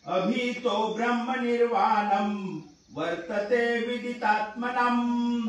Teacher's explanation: शेवटी म लंगड लिहितात, म्हणून म चा उच्चार करायचा, ना म्हणायचं नाही, नाम म्हणायचं